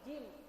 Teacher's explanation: Jadi nirrojim, jim bukan zim, tapi jim ya Bu ya. Jadi memang ada desah yang keluar kalau jim itu Bu ya.